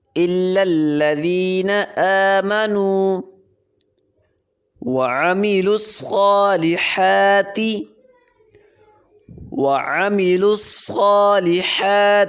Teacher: ذال پہ نرمی کریں گے اور لام کو باریک پڑھیں گے